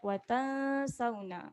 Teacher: Okay, jangan lupa untuk dengung di sini. Dengung dua harakat wa tansawna sebab ada nun mati tanpa tanda